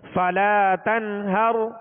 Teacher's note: کیا کریں گے یہاں پر؟ اظہار کریں گے، ظاہر کر کے پڑھیں گے. یہاں تنہر نہیں پڑھیں گے، غنہ نہیں کریں گے